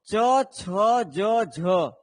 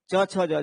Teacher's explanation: च छ ज झ इसको बोलते हैं स्पर्श संघर्षी व्यंजन